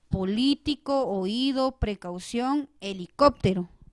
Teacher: yo pronuncio la mayor intensidad de voz donde recae la sílaba tónica y en este caso recae en el acento ortográfico